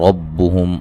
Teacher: را کو موٹا ادا کریں گے